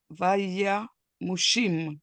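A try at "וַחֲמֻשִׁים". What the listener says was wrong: No, this is a ch. Vacha.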